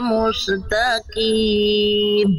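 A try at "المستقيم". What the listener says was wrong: mustaqim bukan Mus mustaqim jangan mantul mustaqim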